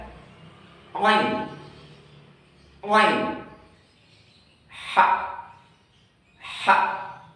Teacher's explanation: daerah tenggorokan tengah, yaitu tempat keluarnya huruf ain dan ha